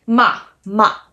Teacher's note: The fourth tone is a down tone. It is very emphatic.